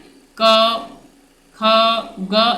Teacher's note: ये डायरेक्ट कंठ से आवाज आता है, इसीलिए इसको कंठ बोलते हैं।